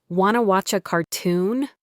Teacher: The words want to had blended together to become wanna. Watch a had become watcha.